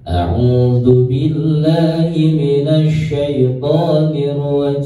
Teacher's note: Ta'awud kuncinya nadanya datar.